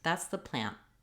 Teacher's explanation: very short N, and I raise my tongue, stop the air for the T sound